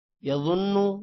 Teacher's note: ضا موٹا ہوگا، اور نون پر غنہ ہوگا